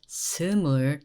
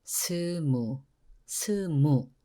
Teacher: we dropped the L in the bottom